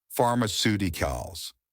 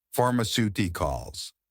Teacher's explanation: This helps us to work out the stress position in pharmaceuticals too. Pharmaceuticals, stress on the third to last syllable.